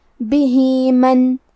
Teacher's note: کلمت بھی کے آخری میں ہا کے نیچے کھڑی زیر ہے، یہاں حکم ہے مد صلہ صغرا، مطلب ہم اپنی آواز 2 مد کے برابر لمبی کریں گے